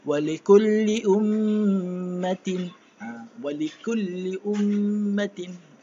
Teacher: Ya, dengan kadar 2 harakat. Jadi bila huruf mim yang bersabdu, tutup mulut. Tutup mulut untuk mendapat dengung yang sempurna, dan dengung pastikan dengung keluar daripada rongga hidung.